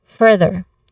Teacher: The stress is on the first syllable, further.